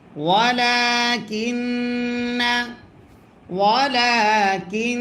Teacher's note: নুনে যদি তাসদিদ হয় গুন্না করা ওয়াজিব হয়